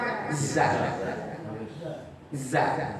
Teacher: kalau zai harus ada yang keluar. Kenapa? Karena makhrajnya ujungnya lidah.